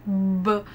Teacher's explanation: जब आप ब प्रोड्यूस करते हैं तो अगर आप यहाँ पर अपने हाथ लगाएंगे लैरिंग्स के अंदर तो खुद आप करके देखिए, ब, there is a vibration produced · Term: वॉइस्ड साउंड